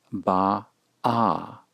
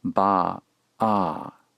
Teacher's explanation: Notice that the second syllable begins with a constriction